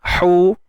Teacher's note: hu sempitkan tengah kerongkong kita.